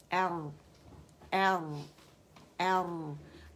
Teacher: توسط کیا چیز ہے, یہ رخاوہ کا اور شدہ کا درمیانہ پن ہے, پارشلی آواز چلتی ہے